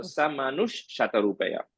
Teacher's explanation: the visarga goes away and ish comes. Yeah, if you have, in case any of you is having Manuhu, that visarga will go away and ish comes.